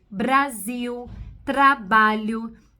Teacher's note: o r fraco que é o r de vibração de ponta de língua nós usamos aonde em palavras onde o r tá sozinho entre